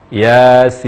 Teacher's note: Ya, baca 2 harakat saja, tidak lebih dari 2 harakat. Ya, lalu sin panjang dengan 6 harakat dan berakhiran dengan huruf nun. Jadi cara membaca yang benar, kata Yasin adalah Yasin, Yasin.